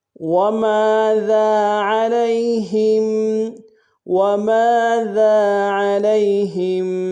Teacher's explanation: وما میں میم کے ساتھ الف مدہ ہے، ایک الف دال میں کھینچیں گے۔ ذال کے ساتھ بھی الف مدہ، اس کو بھی ایک الف دال میں کھینچیں گے۔